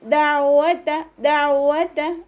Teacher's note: വാവ് ഉച്ചരിക്കുന്ന സമയത്ത് ചുണ്ടുകളെ വട്ടത്തിൽ പിടിക്കുക. ത ലൈറ്റാക്കി കൊടുക്കുക കേട്ടോ.